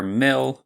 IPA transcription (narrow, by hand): mɪɫ